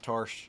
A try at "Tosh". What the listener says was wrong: it's Tosh. It's Tosh. Tosh, not Tarsh. They don't pronounce their R's in Australia. Apparently, that's what I've heard.